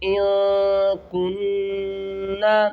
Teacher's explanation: اخفا کریں گے، یعنی کہ آواز کو چھپا کر پڑھیں گے ، ہم اسے ان نہیں پڑھیں گے، ہم اسے پڑھیں گے